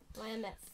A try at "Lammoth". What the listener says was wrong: Well, Lammoth. It's not Lammeth. Look, when you read Tolkien words, you have to try not to sound like an American. Lammeth. Tolkien would never have said that word, Lammeth.